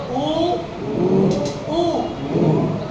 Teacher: होठ दोनों मिलेंगे नहीं, लेकिन मिलने के लिए बेचैन हो जाएंगे दोनों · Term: ओष्ठ